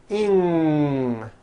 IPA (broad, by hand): ŋ